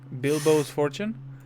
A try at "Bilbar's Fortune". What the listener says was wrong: Bilbar's. Bilbar's. Not Bilbo. Bilbar.